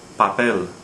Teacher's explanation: hear the stress on the final syllable